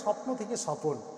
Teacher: এই যে অটা, এর মাঝে অ ছিল না, এখানে কোথাও এই অটার অস্তিত্ব আগে স্বপনে ছিল না, তাই স্বপ্নে ছিল না, কিন্তু স্বপ্নেই নতুন করে অ এলো, কিন্তু মাঝে এলো, তাই এটা মধ্য স্বরগম।